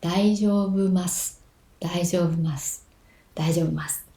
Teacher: It starts low and it gets high on the second mora and then it keeps high until ma and it drops on su. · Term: pitch accent